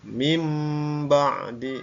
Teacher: suara Nun matinya berubah menjadi suara ya m ba bukan Min ba salah ya jadi mim itu yang benar contoh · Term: iqlab